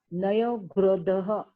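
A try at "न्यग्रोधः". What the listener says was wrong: Not Nayagrodha. Where is Naya? Nyagrodha.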